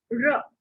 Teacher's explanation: ब बोलते समय ऊपर वाले दांत लिप्स को टच करते हैं, ब बोल के वो दोनों सेपरेट हो जाते हैं। र, एक जीभ जो है वो ऊपर पैलेट को हिट करती है, देन र। और ल, जीभ जो है ऊपर दांतों को टच करती है और उसके बाद सेपरेट हो जाती है।